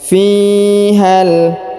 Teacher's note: Huruf fi di ayun sekali karena di depannya terdapat ya sukun.